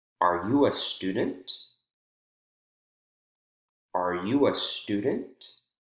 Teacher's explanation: for yes no questions we actually see continued rising intonation even after we increase the intonation of the focus word